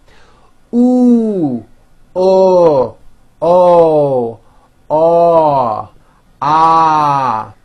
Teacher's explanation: notice how my jaw is opening on each one and also notice how my lips are coming forward all the way on the ooh sound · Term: back vowels